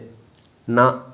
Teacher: நாவின் நுனி மேல்வாய் பல்லின் அடிப்பகுதியில் தொடும்போது அந்த நா வந்து ஒலிக்குது